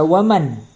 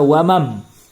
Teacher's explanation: Tidak lagi dibaca waman, ya, tapi dibaca wamam. Bunyi nun mati terus masuk ke dalam huruf mim, seakan-akan huruf nunnya hilang. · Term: idgham bi gunnah